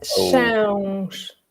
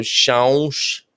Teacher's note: So it's a nasal sound. So the sound is going to come through the nose. So, But with the S sound on the end.